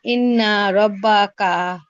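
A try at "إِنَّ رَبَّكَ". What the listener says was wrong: আপুর অনেক মশকের প্রয়োজন। আপু মনে হয় গুণাটা পুরোপুরি বুঝতে পারেন নাই।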